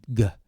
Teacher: This sound, also guttural, G, and you can feel your vocal cord, G. It's involves the vocal cord.